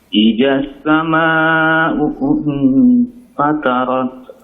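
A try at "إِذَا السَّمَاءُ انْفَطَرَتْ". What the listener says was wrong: Idza sama'u. Idza pakai dzal. Idza sama. Idza sama. Idza sama. Fatarat. Pakai to ya. To-nya tebalkan Mbak ya. Fatarat. Fata. Bukan idas.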